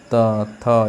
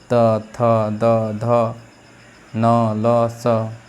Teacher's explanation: प्रकार जैसे दंत जो दंत से उच्चारण होता है त थ इसमें हर बार जो आपका जो जीव है वो दंत से टकराता है